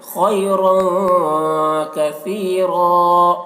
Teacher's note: تنوین کے بعد کاف ہے حروف اخفا میں سے، تو یہاں پر اخفا ہوگا، تنوین کی آواز کو ناک میں چھپا کر پڑھیں گے۔ خیرا، را کو پر پڑھیں گے، خیرا کثیرا، یہاں پر وقف کریں گے تو ایک زبر کے ساتھ الف پڑھا جائے گا، کثیرا، اس طرح۔